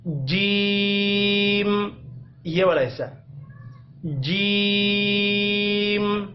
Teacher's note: اس کی ادائیگی اس طرح ہوگی کہ آپ نے زبان کے درمیانی حصے کو اوپر والے تالو کے ساتھ سختی کے ساتھ لگانا ہے